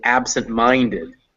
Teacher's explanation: the secondary stress is on ab the primary stress is on mine